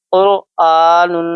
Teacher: را کے اوپر زبر یا پیش ہو تو را کو ہم پر پڑھیں گے، موٹا پڑھیں گے